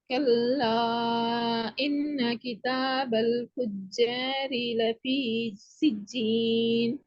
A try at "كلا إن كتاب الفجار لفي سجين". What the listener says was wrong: இல்லையே, நீ ஒவ்வொரு சொல்லா ஒவ்வொரு மாதிரி வருது. ராகம் எடுத்து ஓதுமே.